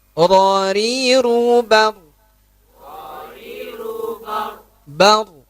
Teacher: Ada getaran sedikit di ujungnya. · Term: takrir